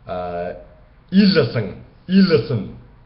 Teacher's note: once again, I velarized the N at the end